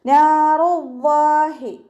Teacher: ഹ കെസ്റയുടെ sound നല്ലോണം clear ആക്കിയിട്ട് തന്നെ പറയുക. ഹംസയായി പോവാൻ ചാൻസ് ഉള്ളതാണ്. · നാറു റ വമ്മയാണ്, ഉയർത്തിയിട്ട് തന്നെ പറയുക.